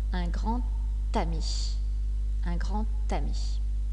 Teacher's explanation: la lettre D a également une prononciation spéciale quand elle fait la liaison elle se prononce t